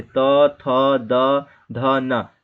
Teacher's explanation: और ता वर्ग में देखिए त, थ, द, ध, न, ये दंत होते हैं, मतलब कि जब आप ता बोलते हो तो आपका जीभ जो है जाकर के आपके ऊपर वाले दांत से टकराता है अंदर की हिस्से में, ठीक है, यानी त, थ, द, ध, न, जितना भी बोलोगे वो सब दांत से टकराएगा।